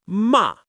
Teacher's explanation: start high and drop straight down. · Your voice starts high and falls quickly to a lower pitch. This tone carries a firm, confident energy. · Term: fourth tone